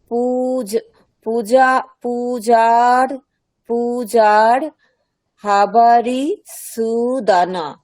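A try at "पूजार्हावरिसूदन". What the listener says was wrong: আচ্ছা হাটা দীর্ঘ আছে, তাহলে পূজার হা বারি সুদানা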